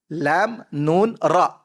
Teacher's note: Tepi hujung lidah. Menekan pada gusi gigi depan atas.